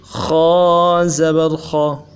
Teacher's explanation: خا کو بھی موٹا پڑھیں گے اور ہونٹوں کو گول نہیں کریں گے۔ ہونٹوں کو گول کریں گے تو پیش کی آواز آئے گی، مجہول ہو جائے گا، تو اس سے اپنے آپ کو بچائیں گے۔